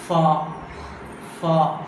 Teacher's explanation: So lower lip is contacting with upper teeth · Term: labiodental